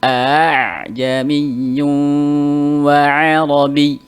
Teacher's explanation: hamzah yang kedua itu dibaca antara hamzah dan alif. Berarti tidak boleh aa atau juga tidak boleh a ya. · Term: at-tashil